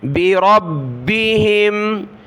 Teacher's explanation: را کو با کے ساتھ ملایا، با کو سخت کیا تشدید کی وجہ سے